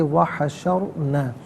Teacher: بارزتن وحشرنا نہیں، بارزتاً وحشرنا، واو علیحدہ حشرنا علیحدہ ملا کر پڑھیں گے، وحشرنا، را ساکن ما قبل شین پر زبر، را ساکن کو پر کر کے پڑھیں گے